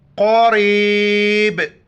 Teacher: यहाँ पर कलकल करेंगे, आखिर में झटके से सिर्फ आवाज़ आएगा